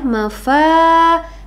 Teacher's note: Mad asli atau Mad thi'i karena di sana ada fathah ya fathahnya ada pada huruf Fa bertemu dengan alif Nah jadi dia panjangnya dua harakat